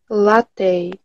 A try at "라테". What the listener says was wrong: 이거가 떼가 아니라 테이예요. 라테. 이 끝소리가 약간 테이 느낌.